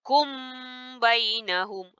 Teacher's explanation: kita kena sembunyikan mim tu dalam erti kata jangan rapatkan kedua-dua bibir. Bila kita rapat dia jadi mim sempurna kan? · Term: menyembunyikan mim ke dalam ba